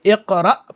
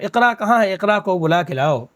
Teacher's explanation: اردو میں اقرا استعمال کرتے ہیں، حمزہ پر جھٹکا پیدا نہیں کرتے ہیں